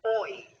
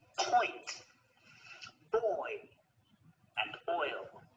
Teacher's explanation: They're on different rows again, but the shape of our lips and the position of our tongue also change a lot because we're going from the right all the way to the left, going from rounded lips to unrounded, starting on the O and finishing on the E, oi. As in the words point, boy, and oil.